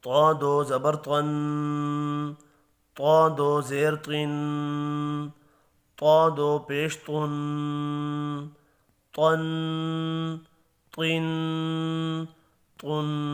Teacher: طا بھی حروف مستعلیہ ہے، پر پڑھا جائے گا